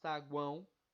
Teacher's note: eu tenho tritongo né eu tenho três vogais juntas numa mesma célula onde há uma é vogal e as outras duas são semivogais